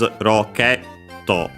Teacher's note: Reminder also that actually rocket in English, in Japanese roketto, the accent is on the ke